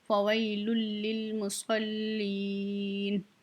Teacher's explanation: मुसल्लीन, याय मद्दा है, खींच के नून के ऊपर वक्फ कर देंगे